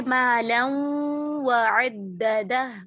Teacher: इसी तरह वाव में भी आ, वाव की मिसाल जो है मालम व अद्ददा, मालम व गुन्ना आ रहा माल। है, तो ये गुन्ना वाव का तो नहीं है, तो यकीनन जी ये गुन्ना जो है वो नून साकिन का है। तो यहाँ पर आप देखें, नून साकिन मुकम्मल मर्ज नहीं हुआ, उसने अपना गुन्ना बाकी रखा है, तो इसलिए इसको कहा जाता है इदगाम नाक़िस, नामुकम्मल इदगाम।